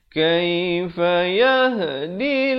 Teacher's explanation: Kaifa yahdillah, dil dibacakan dengan nipis. Jangan baca yahdillah, itu baca tebal, salah.